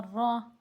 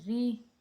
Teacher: را کے اوپر جب زبر آتا ہے وہ را موٹے الفاظ میں پڑھا جاتا ہے، موٹا کر کے پڑھا جاتا ہے۔ را کے نیچے جب زیر آتا ہے تو وہ باریک ہوتی ہے، اسے باریک ادا کیا جائے گا